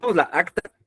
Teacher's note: Si ponemos la acta, van a chocar, va a chocar la sílaba tónica de la con la sílaba tónica de acta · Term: sílabas tónicas